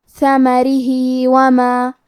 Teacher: ثمرہ، حرف را کا حکم ہے ترقیق تو ہمیں را کو پتلی آواز میں پڑھنا ہے۔ ہا کے نیچے کھڑی زیر ہے، یہاں حکم ہے مد صلہ صغرا، مطلب ہم اپنی آواز دو مد کے برابر لمبی کریں گے